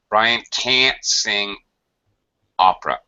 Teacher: Can't, it's higher pitch, it's a more dragged out, full A vowel sound. That obnoxious nasal.